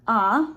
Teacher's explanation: So it incorporates all of the resonators more naturally than some of the other vowels do. So thinking about ah, which is that low back vowel